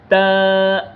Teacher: تا زبان کی نوک اور سامنے والے اوپر کے دو دانتوں کی جڑ سے ادا ہوگی۔ زبان کی نوک تا جب آپ پڑھیں گے، تا زبان کی نوک ہے اور سامنے والے اوپر کے دو دانتوں کی جڑ میں جا کے لگے گی تو پھر یہ ادا ہوگی۔